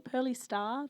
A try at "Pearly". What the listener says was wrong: They've got an asterisk, but I don't think you pronounce it.